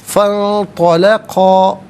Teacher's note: نون ساکن کے بعد طا حرف اخفا ہے تو نون ساکن کو اخفا کے ساتھ پڑھا جائے گا۔ اخفا کہتے ہیں ناک میں آواز لے جا کر گنگنانا۔